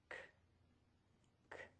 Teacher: To make this consonant sound, start with the back of the tongue near the roof of the mouth. End by pulling it down. The airflow will stop or puff out, and our voice is off. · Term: The K sound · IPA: /k/